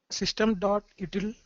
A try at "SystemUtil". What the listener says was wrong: Not system.util. System util. Single word. System util.